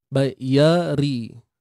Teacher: Ri ni nipis saja, ra baris bawah.